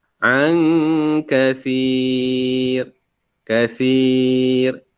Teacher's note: Huruf ra di hujung ni jangan ditebalkan sebutannya. Sebab sebelum huruf ra, apa dia punya baris huruf yang sebelum huruf ra, baris di bawah.